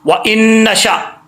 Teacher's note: حمزہ کو نون سے ملائیں گے، کنیکٹ کریں گے، پہلا نون جس کے اوپر جزم ہے اس نون کو چھوڑ دیں گے، اس حمزے کو نون کے ساتھ جو ہے وہ کنیکٹ کریں گے، ٹھیک ہے۔